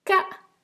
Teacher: So last time we had ka, which was long and low, and just below it we have ka, which is high and short